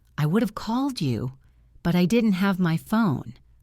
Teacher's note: the word phone is higher in pitch because it is the most important information